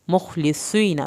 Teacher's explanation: स्वाद को स्वाद पढ़ना है, पुर करके पढ़ना है, या साकिन को खींचना है, नून की ज़बर को हरगिज़ लंबा नहीं करना।